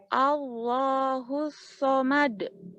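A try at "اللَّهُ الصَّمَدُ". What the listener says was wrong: D-nya jangan D. Somad. Allahus somad. Mad, bukan. Allahus somad. Mad. Mad. E-nya masih terdengar. E-nya terdengar. Allahus somad. Allahus somad.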